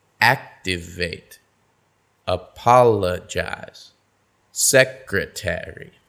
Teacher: notice how the stress falls two syllables in front of the suffix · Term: syllable stress